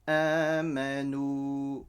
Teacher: So the waw sakin will stretch the noon with a dhamma.